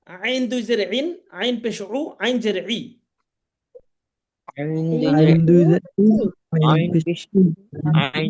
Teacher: আইন এই হরফটা উচ্চারণ করার সময় একটু গলা চিপে উচ্চারণ করতে হবে।